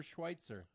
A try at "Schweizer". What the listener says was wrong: Schweizer. There's no T in it.